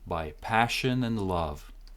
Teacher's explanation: D cancelled and we're linking